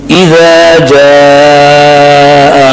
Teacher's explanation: اذا میں حمزہ اپنے مخرج میں سخت، ذال نرم، جاء میں جیم سخت، اس کے بعد مد واجب